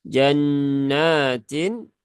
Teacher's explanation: nunnya bertasdid maka tahan dulu ya tiga harakat ghunah musyaddadah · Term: gunnah musyaddadah